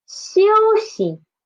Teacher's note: for xi from the start, the tongue never touches the hard palate.